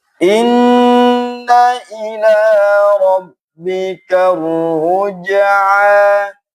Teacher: ro-nya bertasydid dan juga tebal. Jimnya dipantulkan, ainnya matabi'i.